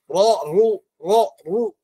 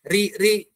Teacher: Ra mufakhamah. Ra itu tebal dalam beberapa kondisi. Di antaranya ra itu berharokat fathah, berharokat dhammah, tebal dia. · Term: Ra tafkhim